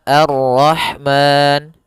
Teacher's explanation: kita boleh memanjangkan dua harakat pada lafal Ma boleh juga empat harakat dan boleh pula enam harakat